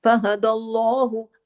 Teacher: فہد اللہ، ہاں کو سینے کی طرف آواز جائے گی. فہد اللہ، اللہ کے نام سے پہلے زبر ہے، لام کو ہیوی پڑھا جائے گا